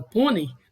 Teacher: no pônei eu tenho uma decrescência na pronúncia, da vogal para semivogal, já que a semivogal é menos intensa